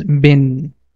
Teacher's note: Like in this example, alif and lam, they are coming between a sign and connecting sign, so they become silent. The b is directly going to connect with noon, the sound becomes bin